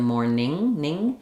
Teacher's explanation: these both end with the ing sound obviously um where the tongue needs to lift in the back um so be careful not to lift in the front like